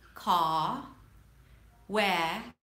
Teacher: I dropped the R and it still made sense, right? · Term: drop the R